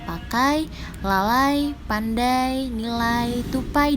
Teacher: Diftong dibedakan berdasarkan letak atau posisi unsur-unsurnya, yaitu diftong naik dan diftong turun. Dikatakan naik karena bunyi pertama posisinya lebih rendah daripada posisi kedua, sedangkan turun adalah sebaliknya.